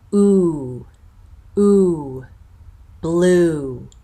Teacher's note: the high tense back vowel